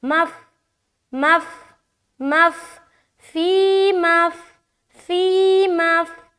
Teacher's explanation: جب بھی آ جائے گا تو آپ کو کنیکٹ کرنا ہے، پھر الف مدہ نہیں کرنا، تو میم کو آپ فا سے کنیکٹ کریں گے